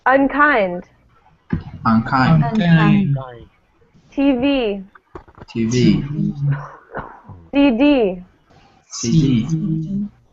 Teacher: all of these words will have the stress at the end, except for one, which is different.